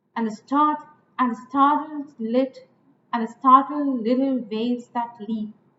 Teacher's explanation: If you like, the start is stressed. So 2 unstressed followed by a stressed, that is anapest.